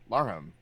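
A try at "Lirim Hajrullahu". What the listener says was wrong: Who's Larham? There's no H.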